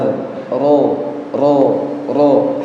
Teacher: Getaran huruf ro itu dua getaran, ro, ro, ro, harus muncul getarannya. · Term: takrir